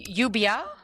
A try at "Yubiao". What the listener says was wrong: You would pronounce the O, that Yubiao. Biao.